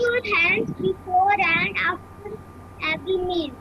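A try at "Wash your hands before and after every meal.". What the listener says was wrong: शाबाश.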